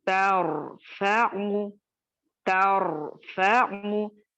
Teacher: ता बारीक रखेंगे, रॉ को मोटा करेंगे, फा बारीक रखेंगे, आइन बारीक रखेंगे।